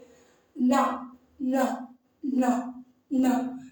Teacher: இப்ப அந்த மயங்கொலி எழுத்துக்கள் 8ன்னு சொன்னோம்ல மாணவர்களே, அதுல எப்படி பிறக்கின்றன அப்படின்னு பாருங்க. ந, நாவின் நுனி, நம்மளுடைய நாவோட நுனி இருக்கு இல்லையா, மேல்வாய் அன்னத்தின் நடுப்பகுதியை தொடுவதால் நகரம் பிறக்கிறது